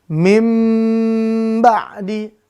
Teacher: bunyi n di nun sukun atau tanwin berubah menjadi mim dan didengungkan ada dengungnya ya ada dengungnya 2 sampai t harakat itu pemirsa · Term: iqlab